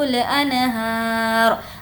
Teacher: ہا کو کھینچیں گے کھڑا زبر ہے اور وقف کرنا ہے اس لیے یہاں پر جزم دے دیں گے